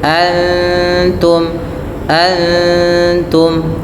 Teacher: Ikhfa hakiki. Suara nunnya samarkan kepada makhraj huruf ta. Dari mana? Yaitu ujung lidah kita menempel dengan antara gusi atas dengan gigi seri atas. Kemudian pada lafal in an an bukan ang tapi antum antum sesuai dengan huruf ta yang tipis.